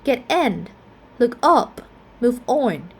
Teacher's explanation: the preposition will be the one that receives primary stress.